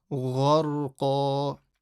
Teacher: Now the ghain is a full mouth. Ra sakin after fatha is also full mouth. And the qaf, full mouth letter, but because you're stopping at a double fatha, then you have the double fatha rule.